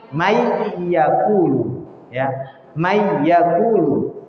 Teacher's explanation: ketika nun mati bertemu dengan ya, nun mati tidak lagi kelihatan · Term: idgham